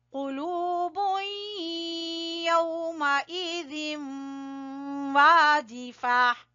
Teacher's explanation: قاف کو پر پڑھنا ہے، زبان کی جڑ سے ادا ہوگا، پھر واو مدہ کی وجہ سے لو کو کھینچیں گے، پھر یہاں پر ہم نے ادغام کرنا ہے.